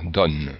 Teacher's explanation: Alors, en principe, le O est ouvert lorsque, dans la même syllabe, il y a une consonne prononcée. Ici, on prononce le N, donc le O est ouvert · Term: O ouvert